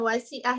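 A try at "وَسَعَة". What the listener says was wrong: Ya, wasa. Bukan wasi', beda lagi. Wasa'.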